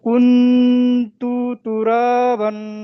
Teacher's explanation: নুন সাকিনকে এক এক আলিফ পরিমাণ গুণনা করে পড়তে হবে।